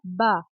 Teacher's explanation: با ادا ہوتا ہے ہونٹوں سے، ہونٹوں کے گیلے حصے سے، یعنی اوپر اور نیچے کا جو دو ہونٹ ہیں ان کا جو گیلا حصہ منہ کی جانب جو ہونٹوں کا گیلا حصہ ہے، ہونٹوں کا تر حصہ، وہاں سے با ادا ہوتا ہے۔ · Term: حروف شفویہ